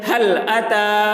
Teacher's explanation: کھڑا زبر کو ایک الف کے برابر کھینچ کر پڑھیں گے